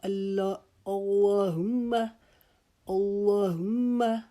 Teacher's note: ہم میم کے اوپر ایک الف کی مقدار رکیں گے کیونکہ یہ میم مشدد ہے